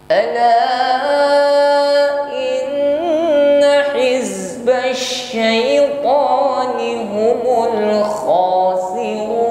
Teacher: Huruf wa di sini kita panjangkan 1, 2 sampai 3 alif, hukumnya mad arid lis sukun